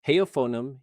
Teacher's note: The F sits between two vowels, so it's voiced, pronounced like a V. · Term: fricative allophone rule